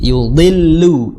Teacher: Tapi jangan sampai dillu, lu ikut tebal, jangan. Karena lam itu tidak memiliki sifat isti'la. Jadi yudillu, lu biasa, ya.